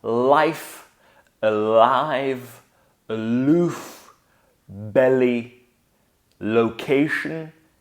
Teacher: of you are probably more familiar with the light l sound this sound is made by taking the tip of your tongue and putting it behind your upper teeth like this and the second component of this movement would be